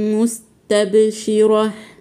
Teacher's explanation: هنقف على التاء بالهاء المهموسه